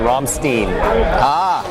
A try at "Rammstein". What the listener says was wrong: Rammstein. You have to say it with the sh. It is not Rammstein. Rammstein.